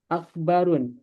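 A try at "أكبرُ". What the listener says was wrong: Akbaru, akbaru tanpa tanwin ya. Isim tafdil bahasanya af'alu. Isim ghairu munsharif tanpa tanwin.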